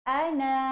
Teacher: Daripada na satu harakat jadi kepada na dua harakat.